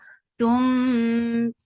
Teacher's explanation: idgham with gunna, so keep the sound in your nose for a longer time.